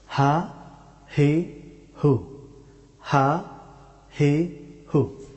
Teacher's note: হা হরফটি উচ্চারিত হয় গলার একেবারে নিচের অংশ থেকে, এই অংশ থেকে হা হরফটি উচ্চারিত হয়।